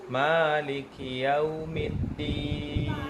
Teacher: Din mad arid disukun, tidak boleh ada ayunan karena itu bentukan mad tabi'i yang dihentikan bacaannya. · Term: mad arid lisukun